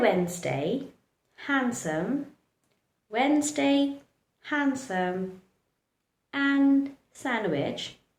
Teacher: don't pronounce the letter D, just keep it silent. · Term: remain silent